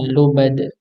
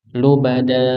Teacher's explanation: lubada dipanjangkan dua harakat, tidak lebih daripada itu. Tidak lebih daripada dua harakat. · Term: mad iwad